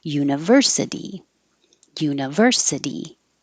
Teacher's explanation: for the core quarantine university change that t to a d don't say the i like uni make it an uh or an it's not stress so it'll be shorter